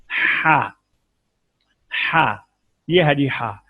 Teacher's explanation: وسط حلق، حلق کا درمیانی حصہ، عین اور ہا دونوں یہاں سے نکلتے ہیں۔